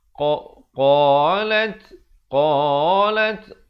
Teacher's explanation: Qalat, qalat, qa 2 harakat. Lat diberikan hamasnya, bunyi angin tu.